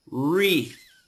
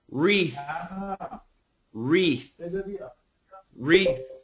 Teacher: So that TH has a lot of air.